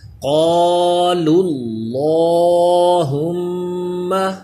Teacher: Next اللہم، اس کا لام یہ بھی کیونکہ اس سے پہلے پیش ہے تو پر پڑھا جائے گا، قالوا اللہم، میم مشدد ہے اس لیے غنہ کریں گے. جب ہجے کریں گے تو اس لام کو اللہم کے لام سے ملائیں گے.